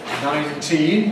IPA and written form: ˌnaɪnˈtiːn (nineteen)